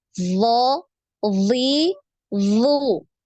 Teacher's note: Jadi tebal ya. Ketika kasroh pun dia tebal.